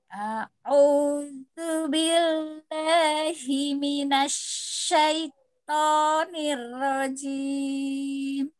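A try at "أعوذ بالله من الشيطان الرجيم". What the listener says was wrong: Pada ya sukunnya itu dia ada hukumnya lin, jadi harus dilembutkan. Minasyaiton.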